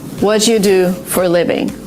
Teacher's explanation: so there is a sound Chu which appears in the middle again this is the way to make your speech smoother